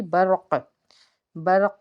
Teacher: یہاں پہ خوب قلقلہ کریں گے، یعنی کہ آواز لوٹ کے آئے گی